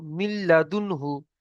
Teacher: নুন সাকিনের পরে লাম এসছে, তাই একে বিনা গুণনায় মিলিয়ে পড়তে হবে।